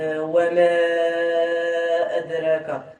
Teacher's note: عندنا المد المنفصل الحكم ديالو 6 حركات. 6 حركات الإشباع. · أدراك عندنا القلقلة في الدال حيت الدال جت ساكنة